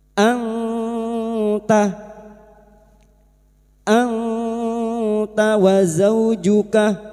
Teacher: Kun anta, nun sukun bertemu ta, ikhfa hakiki. Kita samarkan bunyi nun sukun dan mendengung selama 3 harokat.